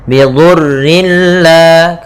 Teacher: kita masukkan tanwinnya ke lam tanpa ditahan ya, bila tanpa dengan gunnah. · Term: idgham bila gunnah